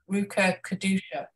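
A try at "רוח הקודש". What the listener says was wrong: It's actually a very guttural sound. It's the kind of sound your mom told you not to make because you spit on people when you say it. It's actually real guttural. Rucha Kadusha.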